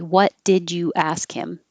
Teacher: you ask him i even had the ja in there so the d and the y make a j you can keep the u or you can change the u